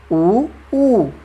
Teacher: उच्चारण में ओठ आपके क्या हो जाते हैं, गोल हो जाते हैं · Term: वृत्ताकार